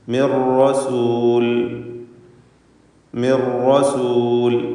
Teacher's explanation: മിൻ എന്ന നൂൻ അല്പം പോലും കേൾപ്പിക്കാതെ പൂർണ്ണമായും റായിലേക്ക് ലയിപ്പിക്കുന്നു. മിർ റസൂൽ, റായിന് ശബ്ദ കൊടുക്കുന്നു, നേരത്തെ ലാമിനും ശബ്ദ നൽകപ്പെട്ടതുപോലെ. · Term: ഇദ്ഗാം ബി ഗൈരി ഗുന്ന